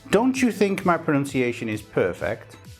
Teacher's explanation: So what sound did I reproduce between the t and the y? I produced a ch sound.